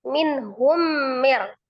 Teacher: Tetap tunaikan sifatul huruf nunnya yang ada tawassut atau bain ya. Tidak terlalu ditekan, tidak terlalu dilepas ya. Di tengah-tengah.